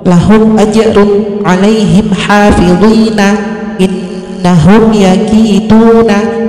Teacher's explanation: Adapun cara membacanya adalah bunyi mim sukun dibaca jelas dan bibir tertutup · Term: idhar syafawi